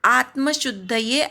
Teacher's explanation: शुद्ध मधल्या शूवर आघात